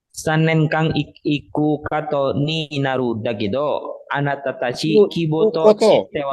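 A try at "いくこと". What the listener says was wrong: Iku kato ya, ulangi. Iku kato jangan kute. Koto bukan kato. Ya, ulangi.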